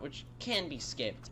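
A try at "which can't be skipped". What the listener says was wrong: does it sound like you're saying it can, also your inflection on it sounds like you'd be like, yeah, you can skip it.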